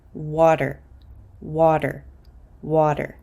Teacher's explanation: water because this T is between an A and an R I'm going to pronounce it as a quick D sound